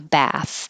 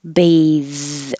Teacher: when there's an e after the th it makes it voice and it's also the verb bathe and the vowel is a